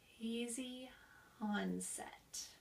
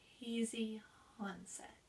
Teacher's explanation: we're letting a little bit of air out of our throat and then we have a very gentle voicing